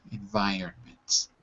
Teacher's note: we say it fast the r is kind of skipped over